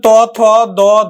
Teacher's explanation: জীবের ডগাটা বেশি কাজ করে আর উপরের পাটির দাঁতের পেছনের অংশ নিষ্ক্রিয় অর্থাৎ কম কাজ করে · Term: দন্ত